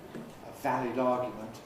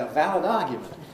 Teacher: The interesting point here is what happens in Australian English, because Australians, for weak I, typically use a schwa. So where I say valid, a valid argument, an Australian would say a valid argument.